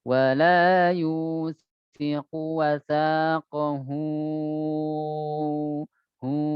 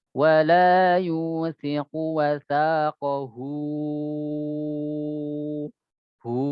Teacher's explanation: itu masih ada suara hidung di hu-nya